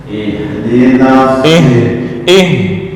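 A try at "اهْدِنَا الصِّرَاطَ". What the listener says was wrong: Nah, bukan syira, tapi sira.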